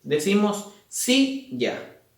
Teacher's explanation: la sílaba que tiene la mayor fuerza de voz se encuentra en sí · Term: acento prosódico